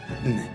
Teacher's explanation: La pointe de la langue se rapproche contre les alvéoles. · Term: Alvéolaire